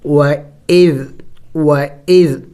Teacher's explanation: ذال نرم حروف میں سے ہے، نرم حروف 3 ہے، ذال ثا ظا، یعنی ان کو نرمی سے ادا کیا جاتا ہے، زور نہیں دینا ہوتا ہے۔ اور دوسری بات، ذال کے اوپر سکون ہے، یعنی ذال ساکن ہے اور سکون والے حرف کو جم کر کے پڑھا جاتا ہے، ان کو ہلایا نہیں جاتا سوائے حروف قلقلہ کے کہ ان کو ہلایا جاتا ہے۔